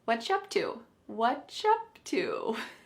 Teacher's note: So here we have what are you being reduced to just what. The ch is you, and what are has just been smushed together, and we can say what up to.